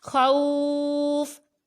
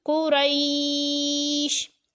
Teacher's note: خا واو زبر خو، فا دو زیر فن، خوفن، وقف، خوف، واو لین کے بعد فا وقف کی وجہ سے ساکن ہوا تو مد لین عارض ظاہر کرنی ہے